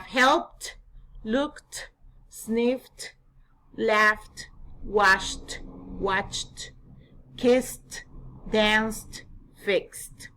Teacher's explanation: for the voiceless sounds we're going to pronounce it like T and there's an aspiration